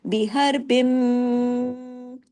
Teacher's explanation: بڑا غنہ ہوتا ہے، دیر تک آواز ناک میں چھپتی ہے